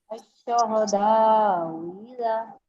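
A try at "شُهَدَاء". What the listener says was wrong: दोनों हमजों को नहीं पढ़ना, सेकंड हमजा को पढ़ना है, पहले को ठीक ताकी के साथ पढ़ें। ऐसे शुहदा, ये शुहदा ऐसे ना करें ना, शुहदा ये ताकी के साथ पढ़ें।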